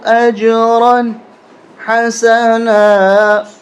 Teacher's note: یہاں پر دو زبریں ہیں لیکن غنہ نہیں ہوگا، اس لیے کہ تنوین کے بعد حروف حلقی آ رہا ہے، حروف حلقی میں سے ہے.